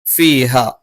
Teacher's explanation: ഹ തൊണ്ടയുടെ താഴ്ഭാഗത്തു നിന്നാണ്